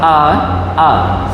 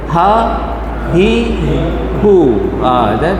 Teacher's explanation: pangkal kerongkong huruf hamzah dengan ha saja ya kalau kita sebut pangkal ni dia tak perlu kita nak tekan-tekan